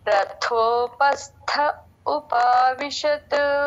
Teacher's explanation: థ మహాప్రాణం అక్కడ థ పలకాలి త థ రెండవది అలాగే పస్థ అక్కడ కూడా మళ్ళీ మహాప్రాణం రథోపస్థ ఉపావిషత్